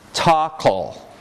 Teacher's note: tackle, where the ka and the ul at the end of that word form their own syllable, kol. So those phones could go together to make a 2-syllable word that would be legitimate.